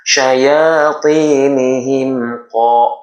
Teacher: Mim yang berharqatan sukun bertemu huruf selain huruf mim dan ba itu adalah izhar syafawi. Cara bacanya adalah memperjelas kalimat mim ini. Tapi jangan ditahan hanya sekedar lewat saja ya.